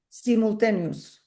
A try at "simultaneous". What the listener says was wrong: Yeah, that's it. Simultaneous. That's it. Pretty much.